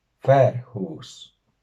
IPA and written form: 'ɸɛr.hʷus (FAÍRǶUS)